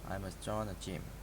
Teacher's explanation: must sounds like must without the final T sound